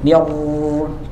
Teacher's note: Jadi getarannya itu tersamarkan. Ada getarannya tapi tersamarkan. Bahkan nggak boleh hilang getarannya.